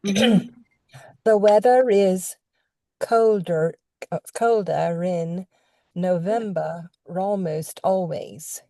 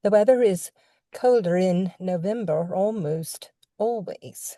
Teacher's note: get used to linking that R to the next vowel